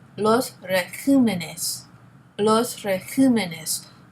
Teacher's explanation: The second one, régimen. So when it becomes plural, the accent changes from the E to the I. So the plural form is los regímenes. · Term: tonic syllable